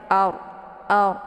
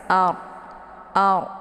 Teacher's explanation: Jadi cara bacanya itu pangkal lidahnya terangkat ke atas. Ard. Ya, ujung lidahnya nempel di langit. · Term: dibaca tebal